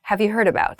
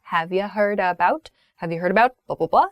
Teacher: the you becomes shortened to ya